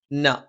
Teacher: ന നാവിന്റെ അറ്റം മേലെ മുൻപല്ലിന്റെ മോണയിലാണ്